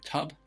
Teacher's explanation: short u sound can be found in the word tub uh the u here sounds like a schwa a very common sound in the english language